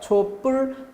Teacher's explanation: 초는 받침 없이 모음으로 끝났죠. 100% 유성음인 모음. 그리고 뒤에 예사소리가 촛불, 된소리로 발음이 되죠. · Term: 사이소리